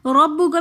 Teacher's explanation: را کے اوپر زبر ہے، تو اس لیے اس را کو ہم موٹا پڑھیں گے